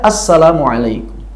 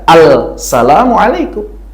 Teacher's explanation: assalamualaikum, enggak dibaca al-salamualaikum. Kenapa assalamualaikum? Ada idgham, lam apa? Lam syamsiyah.